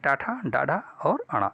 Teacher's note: टा वर्ग के जितने भी वर्ण होते हैं उन सभी का उच्चारण स्थान मूर्धा होता है